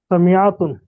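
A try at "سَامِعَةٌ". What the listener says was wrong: মাশাআল্লাহ।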